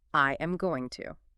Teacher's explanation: In a textbook or you know, in a very formal robotic reading, it is four distinct, isolated words. I am going to. Every syllable gets equal weight.